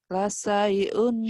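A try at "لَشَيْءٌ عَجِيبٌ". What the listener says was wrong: Shin. Shin. La syai'un.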